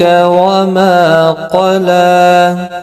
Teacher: لام کے اوپر کھڑی زبر ہے، ایک الف کی مقدار کے برابر کھینچ کر پڑھیں گے